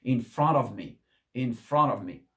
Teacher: le OF, on a un seul F, donc il devient un V